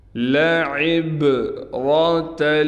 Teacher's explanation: لعبرۃ، عین کو با سے ملائیں گے، با پر قلقلہ یعنی آواز کو ہلائیں گے، را کو موٹا کر کے پڑھیں گے، تا کو لام سے ملا دیں گے۔